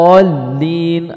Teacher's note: jadi perpindahan dari dha ke lam itu dihentak, adanya hentakan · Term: nabr